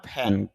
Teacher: aspiration হবে, মুখ থেকে অতিরিক্ত বাতাস বের হবে, ফ সাউন্ড শুরুতে রয়েছে